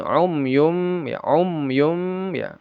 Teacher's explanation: Ya umyun ini mim bertemu ya. Izhar syafawi dibaca jelas mim sukunnya jangan ada gunah.